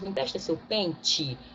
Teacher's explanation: o E, no final da palavra, ele tem som de I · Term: semivogal